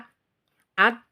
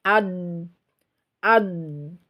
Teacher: lisan itu bergerak memanjang ke depan sedikit itulah yang disebut dengan istitolah